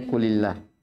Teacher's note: dibaca tipis lamul jalalahnya ketika sebelumnya didahului kasrah atau ketika sebelumnya ada harokat kasrah